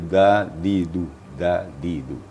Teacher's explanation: Jadi huruf dal itu makhrajnya adalah di ujung lidah dan ujung gigi atas atau papan gigi atas. Di dal, di du, ya, jangan di pangkal gigi.